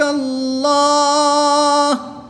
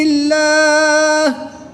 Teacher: اس میں جلالت اللہ عز و جل کے لام سے پہلے حرف پر زبر ہے تو اس لیے اس لام کو پر یعنی موٹا پڑھیں گے۔ وقف کی حالت میں ہا کی پیش کو ساکن کرنا ہے اور یہاں پر وقف کی حالت میں مد عارض ہوگی، 2 سے 3 الف تک کھینچ کر پڑھیں گے۔